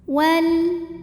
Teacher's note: alif lam menghadapi huruf qamariyah yaitu hamzah. Maka lam sukun kita bunyikan dengan jelas. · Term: izhar qamari